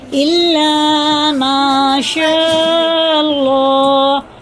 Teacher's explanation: اور یہ الف سے پہلے زبر ہوتا ہے تو حرف مدہ ہوتا ہے. یہ لام الف اور میم دونوں حرف مدہ ہیں. دونوں کو ایک الف کے برابر ہمیں کھینچ کے پڑھنا